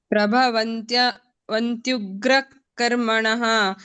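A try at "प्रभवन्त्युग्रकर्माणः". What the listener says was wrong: ಅಲ್ಲಿ ವಂತ್ಯು ಅಂತ ಬರಬೇಕು ವಂತಿ ಇಲ್ಲ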